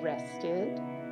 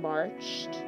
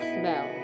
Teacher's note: It can be pronounced in three different ways, with a schwa, as in rested, with a t, as in marched, and with a d, as in smelled. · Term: suffix ed